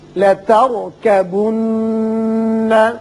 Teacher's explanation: یہ را ساکن جو ہے پر پڑھیں گے اس لیے کہ اس سے پچھلے حرف کے اوپر زبر ہے اور نون مشدد ہے، اس کو غنہ کریں گے.